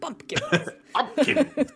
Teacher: Very, very plosive on the P there.